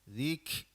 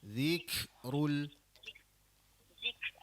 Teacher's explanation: huruf kaf mati tu, kaf sakinah tu, dia dia bagi lepas angin dia. · kaf bila dia mati dia ada sifat hamas ataupun bila dimatikan dinamakan mahmus